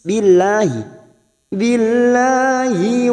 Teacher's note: lam jalalah yang didahului kasroh kita baca tarkik atau tipis